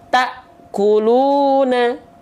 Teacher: Taknya terhentak kenapa? Karena bertemu dengan hamzah sukun yang memiliki sifat syiddah. Nah, maka ketika kita praktekkan ke dalam ayat ini, jangan sampai terhentak pantulannya.